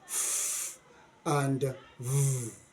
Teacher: From bilabial, we go to labiodental. Labiodental means the upper tooth and the lower lip. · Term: labod Dental